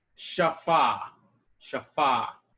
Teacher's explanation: So you stress the last syllable there with an open syllable at the end. Because the hey can't close a syllable, it's too weak.